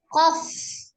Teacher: Secara khususnya huruf qaf itu keluar dari pangkal lidah atas, ya, pangkal lidah.